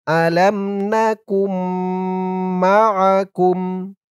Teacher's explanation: কাফ দিয়ে নুনকে না ধরে এই তাসদীদওয়ালা মিমকে ধরতে হবে। ইদগামে বা গুন্নাহ হবে।